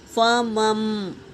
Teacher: میم کو میم سے ملائیں گے، نون نہیں پڑھیں گے